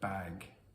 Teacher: You might expect that the final g is fully voiced, but depending on how fast or clearly you're speaking, that g might only slightly be voiced or not at all.